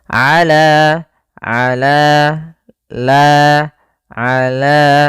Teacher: pada lafal la di sini ada mad tabi'i lagi yaitu fathah bertemu alif, panjangnya dua harakat.